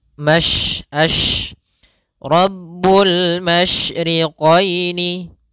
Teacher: tafasyi adalah salah satu sifat yang terkandung di dalam huruf syin yaitu menyebarnya suara sehingga Jangan dibaca rbul masriqini jangan dengan huruf Sin tapi dia